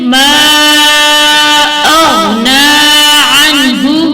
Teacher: آگے پڑھیں، ما اغنی عنہ، یہاں پر بھی مد بن رہی ہے، مد منفصل جائز، اور غین حروف مستعلیٰ میں سے ہے، اسے موٹا کر کے پڑھیں گے